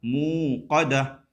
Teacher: موقدۃ لکھا ہوا ہے لیکن وقف کریں گے تو ہو جائے گا موقدہ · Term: ہائے ساکنہ